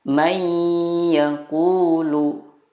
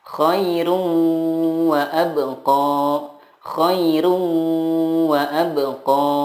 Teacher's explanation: Idgham bila gunnah adalah nun sukun atau tanwin bertemu dengan huruf ya, nun, mim, atau waw. Cara membacanya adalah meleburkan nun sukun ke huruf berikutnya dan disertai gunnah yang dipanjangkan 2-3 harokat.